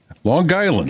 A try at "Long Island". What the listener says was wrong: Not Long Island. No hard G's. Long Island.